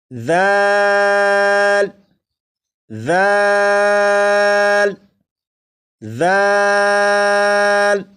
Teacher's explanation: زال کو بھی 3 الف کے برابر کھینچ کر پڑھیں گے